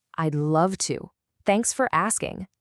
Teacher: The energy isn't flat. It's on love, and it's on asking.